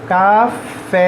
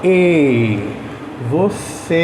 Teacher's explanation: o e tem um som mais aberto e o e tem um som mais fechado